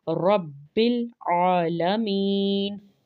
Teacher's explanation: عین کو پڑھیں گے واضح کر کے، اور کھڑا زبر ہے اس کے اوپر تو لمبا کریں گے 2 حرکات کے برابر۔